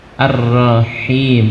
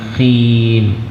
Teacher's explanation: Untuk H dijernihkan, jangan tertukar dengan kha.